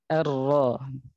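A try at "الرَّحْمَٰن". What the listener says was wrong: Nah itu antum ada apa ya terlalu getarannya terlalu berlebihan menurut yang saya pahami ya. Jadi bukan ar-ro tapi ar-ro.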